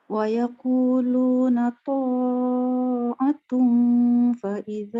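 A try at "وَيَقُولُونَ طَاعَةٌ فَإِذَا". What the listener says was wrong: Kenapa panjang? Kenapa panjangkan to? Kenapa panjangkan to? Panjang sangat.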